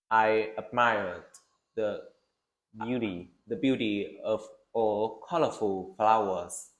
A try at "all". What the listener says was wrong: Sửa một chút cái ô nhé. Ô là hơi Việt tí. All. Of all. Tức là nó vẫn ô nhưng mà nó hơi o nữa. Vậy chữ L này. All. Tức là bây giờ bạn nào ô cũng được nhưng mà bây giờ all.